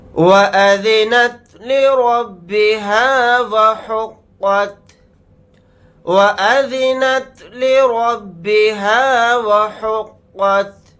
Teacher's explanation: یہاں پر را کو موٹا یعنی پر پڑھیں گے کیونکہ را کے اوپر زبر آ رہا ہے، اور قاف کو یہاں پر موٹا یعنی پر پڑھیں گے۔